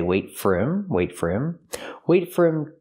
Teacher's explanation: sometimes we don't pronounce the h